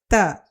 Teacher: The tongue will touch the teeth while pronouncing this letter. Ta. Its sound is ta.